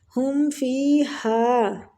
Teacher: ہم میم کا اظہار کریں گے، اظہار شفوی ہو رہا ہے